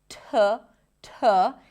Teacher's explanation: For the word took, we start with a T sound. It's aspirated, so we hear a slight H right after.